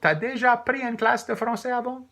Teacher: in Louisiana French, we tend to ask questions by simply doing as a statement, but with rising intonation.